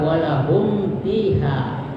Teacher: Jadi mimnya dibaca terang, jelas di bibir dan suara mulut tertutup. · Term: izhar syafawi